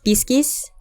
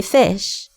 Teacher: Where a Latin speaker says piscis, they shifted the P to an F to say fish. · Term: Grimm's Law